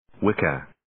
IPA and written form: 'wɪkʌ (Wicca)